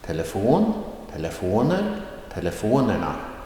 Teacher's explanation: telefonerna, that is a rising tone on the third before last syllable.